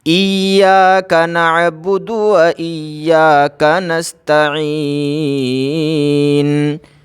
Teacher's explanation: دال کو کھینچنا نہیں ہے بلکہ جلدی پڑھنا ہے دال کو